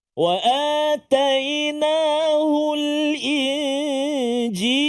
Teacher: Dia kata yang syafawi tu, hukum mim mati. Jadi nama dia ikhfa haqiqi dengung 2 harakat.